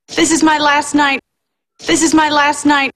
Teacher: So here, the T is not between two consonants. It's after the I diphthong, before a consonant. That's why this T is a stop T.